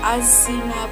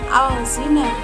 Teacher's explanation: Kemudian az-zina, ini dinamakan al-syamsiyah karena ada huruf al bertemu dengan za, maka al-nya di sini tidak terbaca, namun langsung menuju ke za. Az-zina, bukan al-zina, namun az-zina.